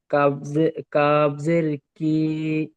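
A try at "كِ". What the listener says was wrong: কি টান হয়ে যাচ্ছে?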